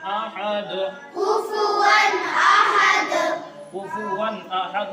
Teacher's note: یہاں اظہار ہوگا، دیکھو واو کے اوپر تنوین ہے، اور تنوین کے فوراً بعد حروف حلقی کے 6 حرفوں میں سے حمزہ آیا ہے